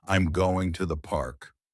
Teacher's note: Falling intonation, used for statements and commands.